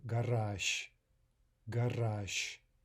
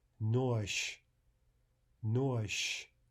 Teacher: zh, which is voiced, zh, is reduced to its unvoiced equivalent, sh.